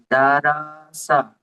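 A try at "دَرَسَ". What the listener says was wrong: দা, রটি টান হয়ে গেল, টান হবে না। হারাকাতের পড়া পড়ে এসেছি, টান হবে। দারাসা, জলদি বলতে। শুধু র এর উপরে যাবার অথবা পেছনে র পুর পড়তে হবে। বাংলা ভাষায় মুখ গোল করে রর মতো উচ্চারণ করে পড়তে হবে।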